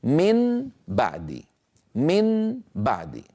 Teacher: يعني عندي نون من طرف اللسان وفيها غنة، وعندي باء من الشفتين مجهورة ليس فيها غنة. الانتقال من حرف من طرف اللسان مغنون إلى باء مجهورة من الشفتين ثقيل. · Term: القلب